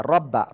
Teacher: রর উপরে জবর মোটা আওয়াজে পড়তে হবে।